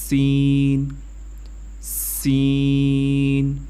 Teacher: سین کی آواز سیٹی کی طرح ہوتی ہے